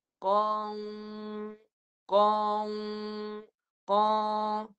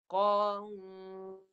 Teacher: Sepatutnya qa, suara kat mulut, ikut makhraj dia. Keluar kat mulut, makhrajnya pangkal lidah naik. Qa. Jangan sengaukan lagi, jangan masuk hidung.